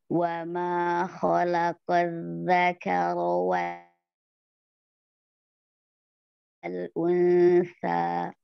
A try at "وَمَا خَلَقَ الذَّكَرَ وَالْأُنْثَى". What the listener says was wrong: Qaf tebalkan lagi, Bun. Kho-nya juga khalaqo.